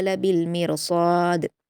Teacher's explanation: इन्न रब्बका लबिलमिरसाद, रा को पुर पढ़ेंगे और रा साकिन को, स्वाद को भी पुर पढ़ेंगे और दाल पर क़लक़ला करेंगे